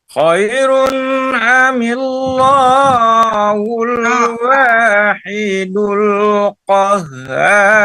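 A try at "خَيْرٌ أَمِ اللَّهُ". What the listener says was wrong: Lamnya itu tebal kedengaran oleh saya. Amillahul. Ni itu kalau kasrah disambut dengan Allah begitu tipis. Amillahu, bukan amillahu. Kalau amallahu, ini amillahu.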